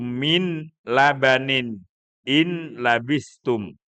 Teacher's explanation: Di sini dikatakan bila gunnah artinya tanpa suara sengau. Tanpa ada suara sengau. Tidak ada dengungan. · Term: idgham bila gunnah